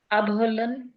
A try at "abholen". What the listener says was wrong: Super.